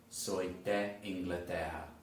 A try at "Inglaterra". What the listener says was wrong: Inglaterra. It's not Portuguese, you're doing the Portuguese R.